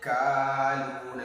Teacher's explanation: you prolong ka because of vertical fatha. Akaluna, jannatin, two maddi of two natural elongation.